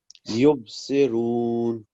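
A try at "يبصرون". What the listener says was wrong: یہاں پر با پر کلکلا اور ساتھ رو نہیں، یبصرون. دوبارہ بولیں آپ. سے نہیں، یبصرون، سے نہیں.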